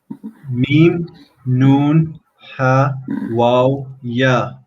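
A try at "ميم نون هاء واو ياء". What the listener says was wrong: Ahsant.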